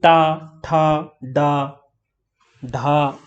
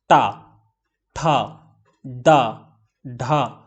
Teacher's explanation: हमारी जीभ जो है वो थोड़ा सा ऐसा मुड़ रही है और ऊपर हमारी जो तालू है उसमें भी टच हो रही है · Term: मूर्धा